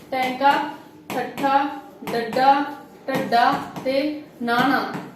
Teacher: ਉਲਟ ਜਿੱਬੀ ਜਿਨ੍ਹਾਂ ਨੂੰ ਬੋਲਣ ਲੱਗੇ ਤੁਹਾਡੀ ਜੀਭ ਆ ਜਿਹੜੀ ਉਹ ਉਲਟ ਜਾਂਦੀ ਆ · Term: ਉਲਟ ਜਿੱਬੀ ਧੁਨੀਆਂ